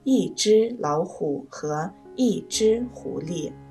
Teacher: 一只的只读一声，所以这里一读四声